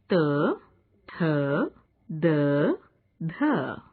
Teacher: दंत्य। इन वर्णों के उच्चारण में जिह्वा की नोक ऊपरी दांतों के मूल को छूती है।